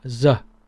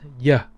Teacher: the southern will pronounce it as ye as in yell or yes